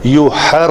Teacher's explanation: یوحر یہ را یہ حقیقی تکرار ہوگی. تھوڑی سی 2-3 بار زبان ایسے زبان کا جو سرا ہے نوکے لسان تھوڑی سی وائبریٹ کرتی ہے